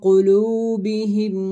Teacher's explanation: قاف کو موٹا کر کے پڑھا جائے گا کیونکہ حروف مستعلیہ میں سے ہے، واو ساکن سے پہلے پیش ہے تو واو مدہ ہوگا، 1 الف کی مقدار جتنا کھینچ کر پڑھیں گے۔